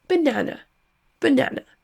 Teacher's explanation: Sauf que vous voyez ici, dans la capture d'écran du dictionnaire Word Reference, que le premier et le dernier A se prononcent avec le son schwa. On n'aura donc pas banana, mais banane.